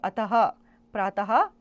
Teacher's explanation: इस ध्वनि का उच्चारण हल्के ह के समान होता है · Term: विसर्ग